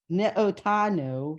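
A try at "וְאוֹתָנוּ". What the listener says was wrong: It's not a N, it's a V. V'otanu. Right, it's a Vav, right.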